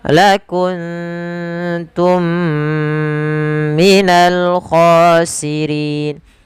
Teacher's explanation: ada mim mati bertemu mim lagi. Kita hukumi dengan idgham mimi. Cara membacanya ditahan suara mnya sepanjang dua harakat.